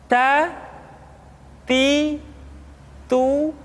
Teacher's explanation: huruf t ketika diucapkan terdengar ada nafas yang mengalir